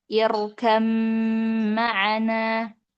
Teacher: ya ayat 42. Di sini Imam Asim dengan kedua rawinya itu membaca huruf ba itu dengan mengidgamkannya kepada huruf mim sehingga menjadi irkam maana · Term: idgham ba pada huruf mim